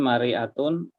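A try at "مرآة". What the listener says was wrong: Mir'at. Cermin itu mir'atun ya. Kemudian mir'ah ya bacanya, mir'atun sahih ya. Kalau mar'ah itu perempuan, woman. Mar'ah, mir'ah. Jadi hanya bunyinya saja sudah bisa beda makna ya. Bunyinya saja.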